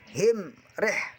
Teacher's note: Cara membacanya bunyi mim dibaca jelas, tidak boleh dengung. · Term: idhar syafawi